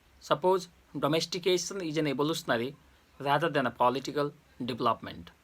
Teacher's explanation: domestication is in the beginning, you should have rising tone. You should maintain your rising tone.